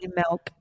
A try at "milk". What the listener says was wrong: You said it fast. Say it slow. She says it with a short E. Sound. Eh.